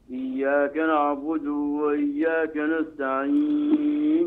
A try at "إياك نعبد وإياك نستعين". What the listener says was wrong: إياك نعبد وإياك نستعين. ولا تمد الياء من إياك واسرع بها النطق وراع فك.